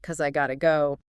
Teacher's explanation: The unstressed vowels in, because, and have reduced to schwa. Got to undergoes reduction and often flapping, becoming gotta. So the whole phrase streamlines into something like, 'cause I gotta go.